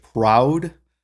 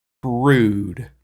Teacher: so proud is more of a diphthong sound